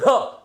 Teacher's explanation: जब ढ बोल रहे हो तब आपकी एक झटका सा, वायु का एक झटका सा आकर के आपको लग रहा है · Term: महाप्राण